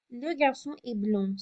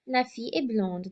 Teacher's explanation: When I add that E, I then hear the final consonant. I hear that final D.